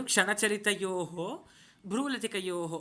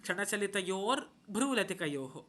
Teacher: క్షణచలితయోహోలో విసర్గ పోయి రకారం వస్తుంది.